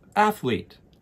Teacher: notice that the emphasis when we say athlete is on the first syllable, athlete. And the TH sound, ath, is more similar to the word bath, bath, ath, athlete.